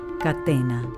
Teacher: la t es una consonante sorda esto quiere decir que no tiene vibración en las cuerdas vocales cuando la pronunciamos pero en los casos en que se encuentra esa entre vocales